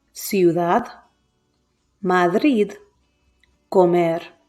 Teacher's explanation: the stressed syllable is on the last one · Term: palabras agudas